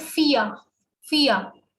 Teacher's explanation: whenever R is at the end of some German word, then mostly it is neglected